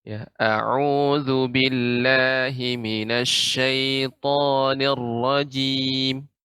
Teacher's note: Nir-rajim, ra-nya, getaran ra-nya sedikit kecil-kecil Nek, halus